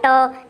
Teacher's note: ट को दोस्तों मूर्धा बोलते हैं, मूर्धा, क्योंकि ट बोलते समय आपकी जीभ मुड़ती है।